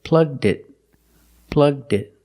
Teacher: it's easier to link the d sound to the next word, it.